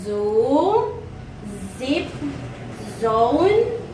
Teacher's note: According to place of articulation is alveolar. Manner of articulation is fricative, like in zoo, zip, zone.